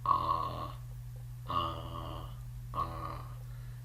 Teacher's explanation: If you open your mouth and try to say the A sound, ah, ah, ah, you'll notice that you're using the back of the mouth, the back of the throat to do that. The A vowel is a back vowel.